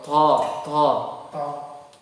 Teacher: to tidak hamas, tidak ada udara yang keluar